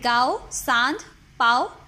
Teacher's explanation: इसका उच्चारण नाक और गले दोनों से होता है. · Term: अनुनासिक